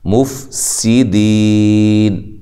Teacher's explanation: فا کو ہلانا نہیں ہے، اور سین باریک سیٹی سے ادا کرنی ہے، دی یا مدہ ہے تو وقف کی صورت میں مد کر سکتے ہیں۔